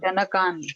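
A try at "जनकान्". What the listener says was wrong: ન અર્ધ, કાન નહીં બોલવાનો, ન અર્ધ છે. જેમાં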